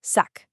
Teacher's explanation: it's a crisp hard K sound at the end